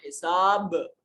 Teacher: اور حساب با ساکن ہے یہاں قطب جدن قاف طا با جیم دال قطب جدن حروف قلقلہ میں سے با ساکن ہے قلقلہ واجب ہوگا